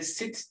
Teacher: kelimenin yine sonunda gördüğümüz bu t sesi İngilizce için stop bir ses